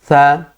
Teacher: इस वाले सकार को दंत्य सकार, क्योंकि ये दंत से उच्चरित हो रहा है, मतलब दंत को जिह्वा स्पर्श कर रही है, इसका उच्चारण स्थान दंत है।